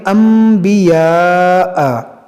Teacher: نون ساکن کے بعد با ہے تو یہاں پر اقلاب کریں گے، اس میم کو پڑھیں گے، اس کو پڑھیں گے انبیاء.